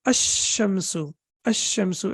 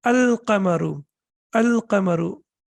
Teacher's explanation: when we have tashdid, then the lam is not pronounced. It becomes sakin. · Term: solar letter